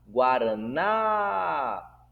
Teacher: eu dei ênfase na última palavra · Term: sílaba tônica